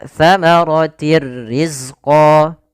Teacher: Idgham masuk artinya memasukkan bila ghunah tanpa disertai dengan gunah. Sehingga hanya masuk saja tanwinnya kepada huruf ro tapi tidak ditahan dengan gunah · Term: idgam bila ghunah